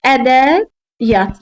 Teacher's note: əgər sözün tərkibində iyyət şəkilçisi varsa, tələffüzdə y-nin biri düşür. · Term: səs düşmə hadisəsi